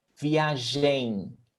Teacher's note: it doesn't even close my lips don't even close to make the m sound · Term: nasal sound